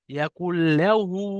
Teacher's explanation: ইয়াকুল্লাহু, এখানে দেখেন নুন আছে, নুন সাকিনের পরে লাম এসছে, এটা ইদগামে তাম বলা হয়। এই নুনটা লামের সাথে মিলিয়ে বিনা গুণনায় তাড়াতাড়ি পড়তে হবে